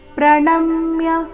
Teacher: ಪ್ರಣಮ್ಯ ನ ಮೇಲೆ ಆಘಾತ